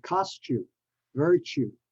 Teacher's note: the t is not pronounced as a t but as a CH